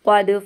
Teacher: दाल की आवाज़ पलट कर आएगी